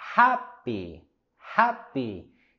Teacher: queremos subir la voz y la entonación en la primera sílaba